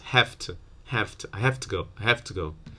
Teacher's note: the v might become voiceless because of the voicelessness of to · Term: assimilation